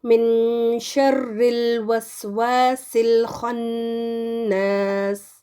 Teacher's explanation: پھر آگے ہے نون ساکن پنک میں، جس کا مطلب ہے اس کا غنہ ہم نے دینا ہے. نون کو تھوڑا سا پروناؤنس کریں گے اور تھوڑا سا شین میں جو اس کے بعد والا ہے اس میں چھپا دیں گے